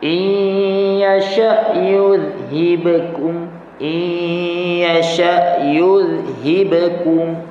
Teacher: Jadi yasha hamzah tu sukun, matikan, jangan ada qalqalah pula.